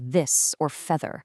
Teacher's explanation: the much harder th in words like this or feather, where you can actually feel your vocal cords vibrating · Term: voiced dental fricative